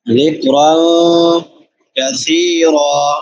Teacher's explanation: نون تنوین کے بعد کاف ہے، تو یہاں پہ اخفا ہوگا۔ ذکرا کثیرا، کاف باریک، سا نرم حروف میں سے، اور سا کے بعد یائے مدہ ہے، اور را پر پڑی جائے گی۔